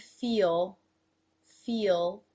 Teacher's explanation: that vowel sound that comes before the dark L is very obvious it's longer